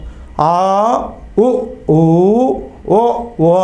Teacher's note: ఆ ఉ ఊ ఓ ఓ అన్నప్పుడు ఉత్తర స్వరము అనగా నోటిలోని నాలుక వెనకకు లాగబడి పెదవులు కొంచెం దగ్గరగా రావడం వల్ల పుట్టే వాటిని ఉత్తర స్వరాలు అంటారు